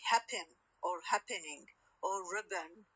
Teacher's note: we can consider it equally acceptable to pronounce as syllabic N or with schwa N